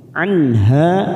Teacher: nun sukun bertemu ha idhar halqi, kita baca jelas tanpa mendengung. Anha fathah diikuti alif, ha 2 harokat kita panjangkan.